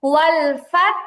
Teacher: এখানে দুটো সাকিন একত্র হয়েছে, একটা তা সাকিন, একটা হচ্ছে ওয়াকফের কারণে হা সাকিন।